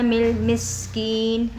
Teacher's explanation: मीम को सीन में मिलाएंगे, सीन पे सीटी भी आएगी